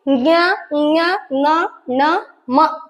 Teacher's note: ಅನುನಾಸಿಕಗಳು ಅಂದ್ರ ಮೂಗಿನಿಂದ ಉಚ್ಚರಿಸುವಂತ ಅಕ್ಷರಗಳನ್ನ ನಾವು ಅನುನಾಸಿಕ ಅಂತ ಕರಿತೀವಿ